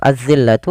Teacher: alif lam yang kita tulis tapi kita tidak baca. langsung ditasydidkan atau diidgamkan ke huruf dalal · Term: alif lam syamsiyah